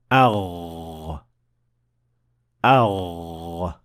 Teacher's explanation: the sound of Ghain is not produced by pushing air or breath out. It is rather produced by vibrating your vocal cords, which is something that you can feel when you touch your throat with your hand when pronouncing the Ghain.